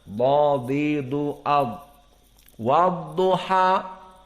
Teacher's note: di saat kita menyebutkan dha, harus penuh mulut ini karena dia mufakhamah. Wadduha berbeda dengan ha dan berbeda dengan wa, maka muraqqaqah wa lisan kita di tempat biasanya.